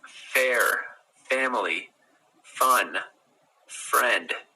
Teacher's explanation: So F, it's called a labiodental, I think. It's where your teeth go to your bottom lip.